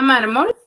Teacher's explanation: mayor fuerza de voz en la penúltima sílaba pero también voy a tildar porque es una palabra grave y